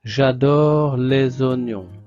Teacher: S va se prononcer Z des oignons